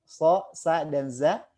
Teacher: Hurufnya adalah huruf-huruf yang keluar dari ujung lidah yang hampir bertemu dengan gigi sari bawah, so, sa, dan za. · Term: sifat as-sofir